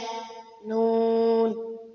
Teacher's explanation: জিহ্বার আগা তার বরাবর উপরে তালুর সঙ্গে লাগাইয়া